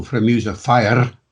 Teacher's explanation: put in a trilled R